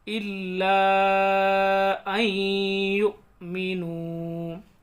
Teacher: بالمؤمنین شہود، وما نقموا منهم الا ان یؤمنوا، یہاں اس الف کو یا میں ملائیں گے، نون ساکن کے بعد یا آ رہا ہے تو ادغام ہوگا، غنہ کریں گے۔